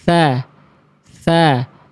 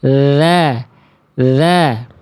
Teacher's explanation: kalau yang huruf tha tadi, dia dikasih aliran udara, dikasih angin, dikasih nafas.